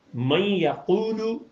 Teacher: قاف چھوٹی پیش اور واو ملائیں تو یہ واو معروف کی پوری آواز بن جاتی ہے